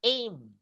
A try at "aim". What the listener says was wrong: Not R, but aim. A sounds like A.